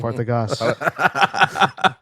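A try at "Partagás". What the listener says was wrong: Roll the R. You got to roll that R, baby. Partagas. Yeah, it's unusual.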